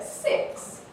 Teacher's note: six which has moving pitch high fall